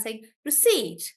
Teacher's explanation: For receipt, yes, that's a great example for receipt, because in receipt, the stress is actually on the last part, which is generally not the case. So in receipt, we are stressing on the seat and saying receipt, like that.